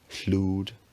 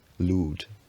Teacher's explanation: The chl cluster coalesces into just a voiceless l, so chlúd. Then eventually it becomes voiced, lúd.